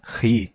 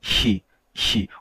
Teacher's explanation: o som ganha um chiadinho ele fica palatalização